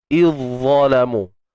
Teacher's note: Huruf zal ni memang dah tak ada dah bunyi dia sebab dia dah dimasukkan, digabungkan bunyinya ke dalam huruf dha. Okey, digabungkan, dimasukkan ke dalam huruf dha.